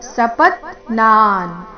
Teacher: ಪ ನಂತರ ಅರ್ಧತ ಸಪತ್ ನಾನ್ ನ ದೀರ್ಘ ಕೊನೆಗೆ ವ್ಯಂಜನ